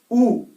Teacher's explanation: जैसे कि प बोलिए, प में पहले ही चिपक जाएंगे, प आपस में होंठ चिपकते हैं एक बार, लेकिन ऊ में नहीं चिपकेंगे आपके होंठ। ऊ बोलेंगे तो एक छेद सा बन जाएगा होंठों में, बिल्कुल नहीं चिपकेंगे।